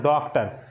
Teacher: डॉक्टर बोलते समय हमारा ओठ गोल होता है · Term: आगत स्वर